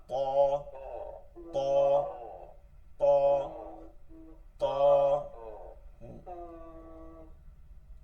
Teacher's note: জিহ্বার আগাটা উপরে দাঁতের গোড়া থেকে পেট পর্যন্ত, এই গোড়া থেকে পেট পর্যন্ত ভিতরে লাগবে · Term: মোটা ত